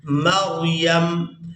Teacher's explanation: وقف کی صورت میں میم کو ساکن کر دیں گے, یا کو میم ساکن کے ساتھ ملائیں گے.